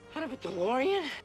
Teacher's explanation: when we have the T sound between two vowel sounds the T becomes a soft D